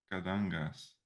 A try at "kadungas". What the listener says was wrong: You are close, except for I couldn't hear the S.